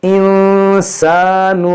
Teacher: नून साकिन के बाद सीन है, यहाँ पर इख्फा करेंगे, यहाँ पर अलिफ मद्दा है, इसको खींचेंगे।